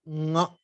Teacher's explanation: Nga is the same kanthya consonant, that is the guttural consonant, but the sound is nasal. So nga. So we are not just obstructing it here, but we are adding one nasal.